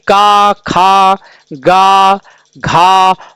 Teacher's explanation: इसका जो उच्चारण होता है वो कंठ से होता है